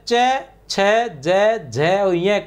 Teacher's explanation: च वर्ग के बोलने से सांस कुछ घर्षण के साथ निकलती है। च वर्ग के बोलने से च वर्ग के बोलने या च वर्ग के उच्चारण में सांस जो होती है कुछ घर्षण के साथ निकल निकलती है। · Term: स्पष्ट संघर्षी